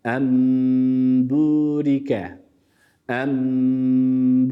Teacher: ötre olduğu için haliyle Dudaklar Yine önde toplanıyor